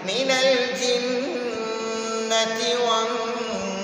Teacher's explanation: جن میں نون مشدد ہے تو ادھر ہم نون پر غنہ کریں گے